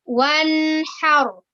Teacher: Kemudian ada nun dan ha. Nun sukun bertemu dengan huruf ha. Itu dinamakan dengan izhar, ya. Izhar atau dibaca jelas, ya, tidak boleh dibaca dengung